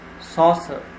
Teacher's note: Saucer is a noun, so the stress would be at the first syllable.